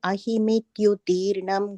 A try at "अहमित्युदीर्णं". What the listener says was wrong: That means the third line, Prashamavan aham ityudhirnam. I think we said ahim. It's only ha there. Aham